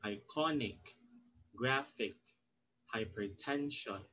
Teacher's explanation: you put the stress on the second syllable from the end of the word